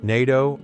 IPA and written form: ˈneɪtoʊ (NATO)